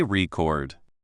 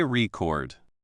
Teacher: The loud part is on the first part.